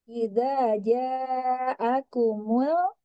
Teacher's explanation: Dipanjangkan, kemudian lam sukunnya ditipiskan ya.